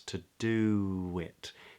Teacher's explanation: All right to, another schwa, to, do it. And then we get this wonderful thing called an intrusive W, where the lips round for to do, and then because the next word begins with a vowel, to do it, we release the lips, to do it. Yeah, so there's a little kind of weird W in the middle.